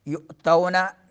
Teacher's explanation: एक ही कलमे में जो है हमज़ा आ रहा है मद के बाद मद मुत्तसिल। युअतौना हमज़े को झटका देंगे हलक के उस हिस्से से जो सीने के करीब है